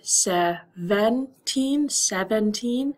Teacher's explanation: you might hear a short I sound in the second e